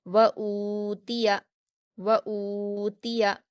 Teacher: हमज़ा पर वाव मद्दा है 2 हरकत खींचकर पढ़ेंगे। ता पर हरकतें जल्दी पढ़ेंगे, या पर हरकतें से भी जल्दी पढ़ेंगे।